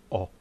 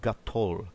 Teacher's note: pronounced as the O in the British English variant of shop so it's a clear o not influenced uh by other sounds nor does it need to be extended